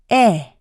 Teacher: is produced by positioning the tongue forward and in the middle of the mouth the jaw is in a partially open position